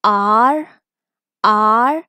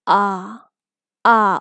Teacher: in American English this is r r and in British English this is ah ah open your mouth ah